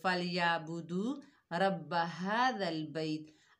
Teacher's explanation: غور سے سنیے، فَلْيَعْبُدُوا رَبَّ هَذَا الْبَيْتِ۔ اب دیکھیے عین کو ہم ادا نہیں کر رہے، واو مدہ کو بھی ہم نے چھوڑ دیا، فَلْيَعْبُدُوا، را کو موٹا نہیں پڑا، رَبَّ هَذَا الْبَيْتِ، هَذَا الْبَيْتِ، وقف بھی ہم نے صحیح نہیں کیا۔